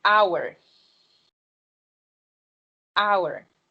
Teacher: So hour starts with a consonant, right? H. But here, H is silent, right?